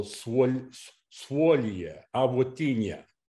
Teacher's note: In Latvian, O always has a U sound in front of it. It's a W.